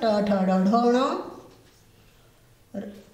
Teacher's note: ऋटु रसानाम मूर्धा यानी री री ह्रस्व दीर्घ दोनों री, टू यानी ट वर्ग ट ठ ड ढ ण, ऋटु रसानाम र और श, इनका उच्चारण स्थान है मूर्धा। और मूर्धा से बोले जाने वाले जितने वर्ण हैं वो कहलाते हैं मूर्धन्य।